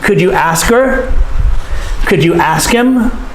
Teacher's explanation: Many times we cut the H off of her and him in the sentence. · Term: reduce form